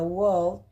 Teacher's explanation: En esta última parte de las vocales largas tenemos la vocal que vendrá siendo la O, que es una vocal entre medio abierta y medio cerrada, trasera, que se emite redondeando los labios